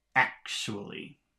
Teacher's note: the first syllable is accented or stressed in the word actually